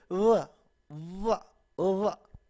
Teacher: अभी फ भी मैं नहीं था फ फ इस तरह, इससे ज्यादा लंबा नहीं क्योंकि फिर आपकी वो बीच में वो क्या शामिल हो जाता है, वॉवल की जो है ना साउंड शामिल हो जाती है अच्छा अब ये क्या व व व अच्छा व के अंदर ये जो व हम कहते हैं तो इसमें जो है ना वॉइस्ड है, ये इसके अंदर हमारी वाइब्रेशन जो है ना वो फील होती है